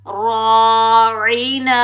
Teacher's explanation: ला तक़ूलू राइना, राइना, रा अलिफ ज़बर रा, ये अलिफ मद्दा है, ठीक है। रा को ज़बर की वजह से मोटा पढ़ेंगे, पुर पढ़ेंगे।